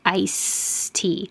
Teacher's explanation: the final sound in ice isn't a stop consonant so the air does keep moving when you say ice t however you are going to stop the airflow when your tongue